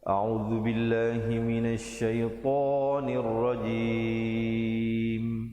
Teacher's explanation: billah dibaca lafzul jalalah dengan wajah yang nipis dan la-nya dibacakan 2 harakat